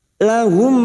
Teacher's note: mim sukun bertemu mim Idam Mimi siap masuk pada huruf mim berikutnya dan mendengung selama dua atau tiga harakat